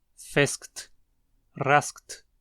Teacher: o K se torna pouco perceptível por sua posição entre duas consoantes